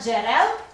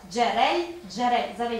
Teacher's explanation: останній звук у першому слові позначає твердий приголосний а в двох наступних М'який приголосний